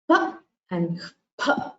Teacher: there is air exhaled from the mouth before p and p and p. This is called the upadhmaniyaha.